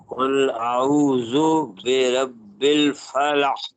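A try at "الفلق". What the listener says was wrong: नहीं, फलक, एक्स्ट्रा आवाज, फलक, ये अब आपने कला अदा किया, ठीक है जी।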